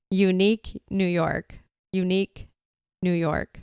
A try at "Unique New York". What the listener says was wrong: You're doing pretty good with that one.